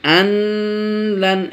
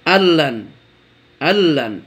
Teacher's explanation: বন্ধুগণ, পূর্বে বলেছি যে দুটো অক্ষরে ইদগাম হয় কিন্তু গুন্না হয় না, একটা হলো লাম, একটা হলো র। তো দেখেন নুন সাকিনের পরে লাম এসেছে, সেজন্য এখানে ইদগাম হয়ে গেছে, নুনটা লামে ঢুকে গেছে কিন্তু গুন্না হয়নি। আল্লান এরকম হয়নি, আল্লান এরকম হয়নি, কি হয়েছে আল্লান, আল্লান।